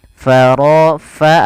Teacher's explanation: alirkan nafas pada lafal fa, ini jangan diganti dengan pa